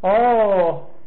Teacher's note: 这个藏文的3声呢是先低中间高后边低，就是中国这个汉语的3声是挖下去，藏语的3声是拱起来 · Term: 升降调